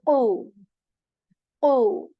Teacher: Okay, the next letter is qaf letter, the heavy qaf, and for this back part of the tongue, it touches the soft palate with strength